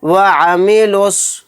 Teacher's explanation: تو یہاں پر دیکھیں واو بھی نہیں پڑھا جائے گا، الف نہیں پڑھا جائے گا، پھر دوسرے نمبر کا بھی الف نہیں پڑھا جائے گا، یہ لام بھی نہیں پڑھا جائے گا، ڈائریکٹ لام کو صاد کے ساتھ یہاں پر ملا کر پڑھیں گے